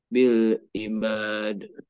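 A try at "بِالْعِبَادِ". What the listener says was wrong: Nah, jangan sampai ada wakaf.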